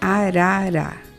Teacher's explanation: Seu som fonema é O som é fraco, a ponta da língua para cima, no meio do céu da boca, entre vogais